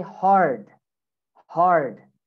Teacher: in british english you don't say the r okay but in america we say the r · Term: r sound